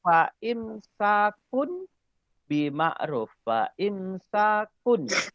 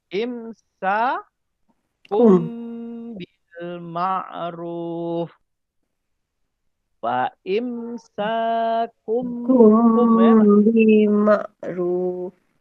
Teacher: tanwin bertemu dengan ba, maka ditukar tanwin kun ni ditukar kepada bunyi mim. Jadi dia Kum. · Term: iklab